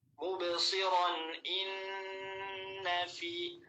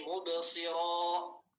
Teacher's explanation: Itu nanti tanwinnya mubsiran terdengar. Tapi kalau misalkan nanti waqaf, ya, kita waqaf, maka tanwinnya hilang. Mubsiran jadi mubsira.